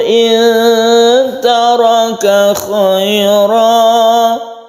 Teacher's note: kita dengungkan di in taraka karena ikhfa, nun mati bertemu dengan ta